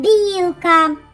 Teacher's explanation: як вимовляється перший звук м'якенько М'який приголосний б